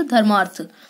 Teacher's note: धर्म जमा में अर्थ, म के साथ हमें अंत में किसका स्वर सुनाई दे रहा है, अ का, और साथ में दूसरा जो वर्ण है उसमें अ सबसे पहला है, दोनों अ मिलके आ बनते हैं